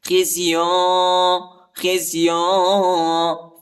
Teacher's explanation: خا کو زا کے ساتھ ملائیں گے، ٹھیک ہے، اور یا پر اخفا ہے